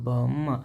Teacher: ನಾವು ಉಚ್ಚಾರ ಮಾಡುವಂತಹ ಸಂದರ್ಭದಲ್ಲಿ ನಮ್ಮ ಎರಡು ತುಟಿಗಳು ಸಂಧಿಸುತ್ತವೆ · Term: ಓಷ್ಟಾಕ್ಷರಗಳು